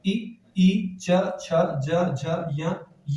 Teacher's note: और तालव्य के साथ ताल से उच्चरित होते हैं।